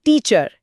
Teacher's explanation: जैसे शब्द है टीचर। इसमें पहले हिस्से यानी टी पर जोर दिया जाता है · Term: स्ट्रेस